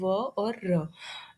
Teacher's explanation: जब organs close होते हैं पर एयर फ्लो को स्टॉप नहीं करते, उसको हम अप्रोक्सीमेंट बोलते हैं